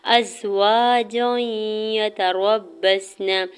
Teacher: ازواجا یتربصن، حمزہ کے زبر کو زام شدت کے ساتھ ملاتے ہوئے پڑھنا ہے، الف سے پہلے واو کے اوپر زبر ہے، الف مدہ ہو رہا ہے، جیم کے اوپر دو زبر کی تنوین اور آگے یا مشدد ہے، تو تنوین کو یا مشدد کے ساتھ ملاتے ہوئے ادغام مع غنہ کا رول اپلائی ہو رہا ہے۔